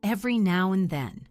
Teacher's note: The D in and often gets reduced or dropped.